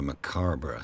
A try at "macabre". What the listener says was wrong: I pronounce it macabre. I hate it when people pronounce the B, the R-E at the end.